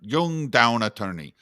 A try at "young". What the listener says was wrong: So young, that with that Y sound, young. I once had to correct an attorney because it sounded like down, like you were saying, and then sometimes, often, yeah, jung, like almost like they're talking about the philosopher.